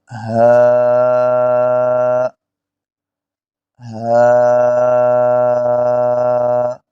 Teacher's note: حمزہ اور ہا کو بھی حروف حلقیہ کہتے ہیں۔ جی تو ہا کے نکلنے کی جگہ جو ہے حلق کے نیچے والے حصے سے ادا ہوتا ہے